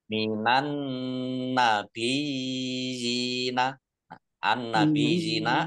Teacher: Minan nabiyina, an-nabiyina, alif lam sansiyah karena tidak dibaca, langsung masuk ke huruf berikutnya yaitu nun, ditandai nunnya ada tasdidnya. Nun tasdid dibaca gunnah atau mendengung, ditahan 2 harokat biar tampak dengungannya. Minan nabiyina, ya tasdid yang harokat di depannya kasroh namanya matamkin.